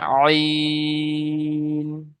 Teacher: 3 আলিফ পরিমাণ টান দিতে হবে এটি